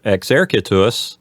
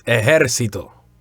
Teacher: We see a softening of the X sound, the second letter of exercitus. We see that X sound softening to an H sound in ejército.